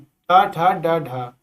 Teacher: इन वर्णों को उच्चारण करते समय जब जीभ का अगला हिस्सा जब मुंह से जो मुड़कर ऊपर की तालू के ऊपर भाग को छूता है तब उन्हें हम कहते हैं मूर्धन्य ध्वनिया।